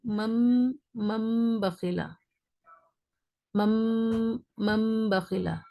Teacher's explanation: تنوین یا نون ساکن کے بعد اگر با آئے تو نون کی آواز کو میم ساکن سے بدل کر غنہ کر کے پڑھیں گے. جیسے من بخیلا کو مم بخیلا، مم بخیلا، بالکل صاف.